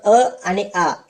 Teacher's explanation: अ आणि आ यांचा उच्चार कंठातून होतो म्हणून यांना कंठवर्ण असे म्हणतात